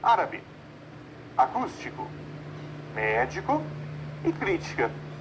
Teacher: Perceba que essas palavras, todas elas recebem acento. E a sílaba forte é a antepenúltima ou a terceira de trás para frente. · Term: palavras proparoxítonas, proparoxítonas